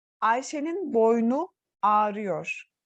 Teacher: Ama sonuna U sesli harfi geldiği için buradaki boyun kelimesinde bulunan aradaki U düşmeye uğramış arkadaşlar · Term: ünlü düşmesi